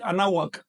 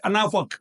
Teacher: Los hombres la pronuncian así, anahuak. Y las mujeres anahwak todavía más cerrado, casi tirando a a B, corta o a F.